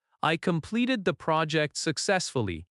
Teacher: The voice goes down at successfully. That falling tone signals certainty and control. Avoid rising tone in statements because rising tone can sound unsure. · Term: confident falling tone